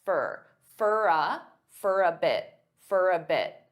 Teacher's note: many native speakers will combine all three of these together and they'll pronounce for as more of an unstressed fur